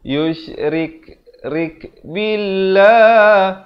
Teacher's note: Lafz jalalah dibaca nipis 2 harakat